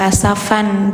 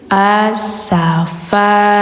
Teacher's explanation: Ah ini bacanya fa panjang dua harakat. Terus tidak dibaca n-nya. Jadi enggak asfan, tapi asafa